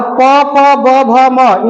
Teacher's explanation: प, फ, ब, भ, म, इनका उच्चारण किससे होगा? तो इनका उच्चारण ओष्ठ से होगा।